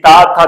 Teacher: जब तक आपकी जिब्बा आपके दांत को स्पर्श नहीं करेगी तब तक आप ता नहीं बोल सकते